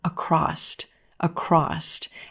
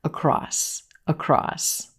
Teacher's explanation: crossed adding a T sound at the end of this word no you don't need a t here this word ends in s